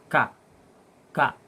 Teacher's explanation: bawah pangkal lisan dengan langit-langit atas, keluar darinya huruf ka. Ya, berdekatan dengan huruf qa.